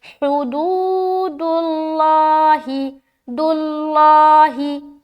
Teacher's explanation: دال کو لام سے ملا دیں گے